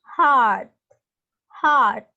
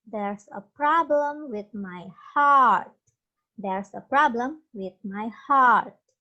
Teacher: Jadi, A-nya panjang dan sedikit membulat, hampir berbunyi huruf O. Tapi bercampur dengan huruf A. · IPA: ɑ: